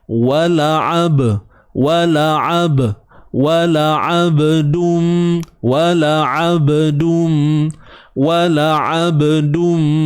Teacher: Ba yang mati di tengah bacaan, di tengah-tengah bacaan ataupun dalam keadaan bersambung disebut sebagai qalqalah sughra, kecil ataupun lemah.